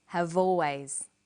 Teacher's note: notice how in conversation we link the final consonant sound V with the initial vow sound o have always crocodiles are crocodiles